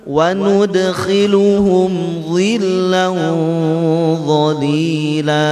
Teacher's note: Dan cara mengikhfakannya, dekatkan dengan makhrajnya dha, jangan terlalu jauh.